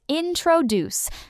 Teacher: Many people say introduce, but it's introduce. The stress is at the end. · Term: Word stress